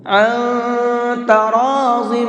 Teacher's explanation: اس نون کے اندر اخفا کریں گے، ناک میں آواز کو چھپا کر کے پڑھیں گے، اس لیے کہ یہاں پر نون ساکن کے بعد میں تا ہے، اور تا اخفا کے حرفوں میں سے ہے۔